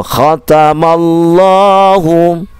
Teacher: taknya jangan khota khota, ya, jangan panjang. Ya, taknya a-nya cuma satu